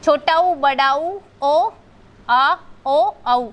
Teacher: पश्च जो जीभ के पिछले हिस्से से बोले जाते हैं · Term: पश्च स्वर